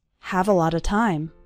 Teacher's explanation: All of those little words, a lot of, run together into a lotta, so it sounds like this, have a lot of time.